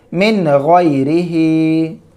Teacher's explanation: دیکھیں یہاں پر بھی نون ساکن کے بعد غین حروف حلقی میں سے ہے، تو اس نون کو ظاہر کر کے جلدی پڑھنا ہے بلا غنہ کے